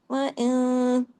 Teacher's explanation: چھوٹا غنہ ہوا نا، اور نون کی آواز اخفا، اخفا کی وجہ سے تھوڑی ناک میں گئی، تھوڑی باہر رہی۔ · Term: اخفا حقیقی غنہ کاملہ